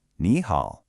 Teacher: So to make it flow better, native speakers have a natural shortcut. When two third tones are together, the first one changes into a second, rising tone. So even though it's written as ni hao, it's always pronounced ni hao. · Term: third tone sandi, third tone sandhi